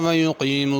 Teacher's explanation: یقیموا میں قاف پر پڑھنا ہے